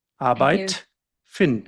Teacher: at the end of a syllable, the D sounds exactly like a T